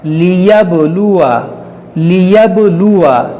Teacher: دیکھیے با میں قلقلہ ہوگا اور اس الف کو نہیں پڑھا جائے گا. لیبلوا واو زبر وا نون با زبر نب ونب لام پیش لو ونبلو واو زبر وا ونبلوا با میں قلقلہ ہوگا ونبلوا اور اس الف کو نہیں پڑھا جائے گا.